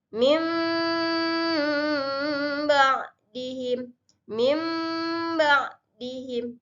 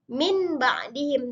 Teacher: ya iqlab artinya berubah atau membalikkan apa yang diubah ataupun dibalikkan bunyi nun mati dan tanwin berubah dari yang awalnya Nun menjadi mim